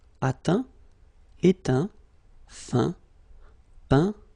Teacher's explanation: Okay, as usual, final T not pronounced.